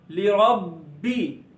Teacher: बा रूफे कलकला में से है जिसमें आवाज लौट कर निकलती है